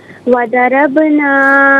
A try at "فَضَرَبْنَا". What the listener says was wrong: فا ہے، فا، فضربنا، فا ہے۔